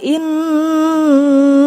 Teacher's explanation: karena nun bertasydid itu gunnah, dibacanya itu ditahan 2 harokat.